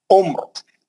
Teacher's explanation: ये रा साकिन है और ये मीम भी साकिन है, आइन पे पेश है, उम्र, है ना, तो आपको मालूम होगा तीसरे हर्फ पे जबरिया पेश है तो रा मोटी पड़ जाएगी